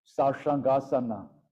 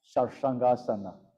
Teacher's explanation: it's more like a back of the mouth kind of sh